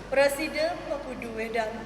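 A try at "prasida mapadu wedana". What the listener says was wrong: Mopadu, sampunang mepudu sing ada kata mepudu.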